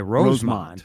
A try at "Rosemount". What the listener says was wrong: suburban Chicago city, Rosemont. But here it's Rosemount. No, it's spelled Mount. Oh, yes, in Chicago it's Mont. It is different.